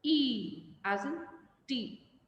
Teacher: The lips are spread and the sound is long